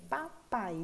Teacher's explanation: Na última sílaba nós temos de novo um ditongo, o A e o I, formando ali uma sílaba e cada um com o seu som